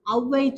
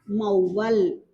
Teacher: இது ஒரு சொல்லுக்க முதல்ல மட்டும்தான் வரும். முதல்ல மட்டும்தான் வரும், 1 மாத்திரையா ஒலிக்கும். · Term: ஔகார குறுக்கம்